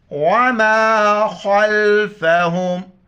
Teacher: خا کو موٹا کر کے لام کے ساتھ ملائیں گے